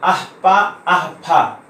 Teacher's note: पा फा के पूर्व जो अर्ध विसर्ग ध्वनि है इसको उपध्मानीय कहते हैं।